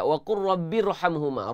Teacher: Ra mati sebelum dia baris bawah. Kalau ikut kaedah kena tarqiq, kena nipis. Tapi di sini kena baca dengan tebal. Di sini kena baca dengan tafkhim, tuan-tuan dan puan.